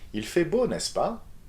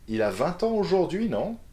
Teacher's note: You can either use n'est-ce pas or non at the end of a question with rising intonation. So n'est-ce pas is the equivalent to the English tag question.